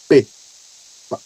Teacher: Um período de silêncio em que o ar está bloqueado, a boca está fechada, impedindo que o som saia. Depois um momento de explosão, que é o, na teoria, nós chamamos de burst.